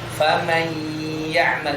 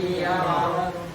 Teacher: Namanya kan idgham bi gunnah. Berarti idgham harus ada gunnahnya.